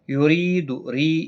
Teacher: یا مدہ ہے، اور زیر کی وجہ سے باریک پڑھا جائے گا۔